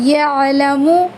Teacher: عین کو جھٹکا نہیں دینا ہے